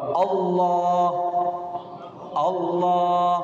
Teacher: pada akhir ujung lidah menempel pada gusi dari gigi bagian atas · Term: lam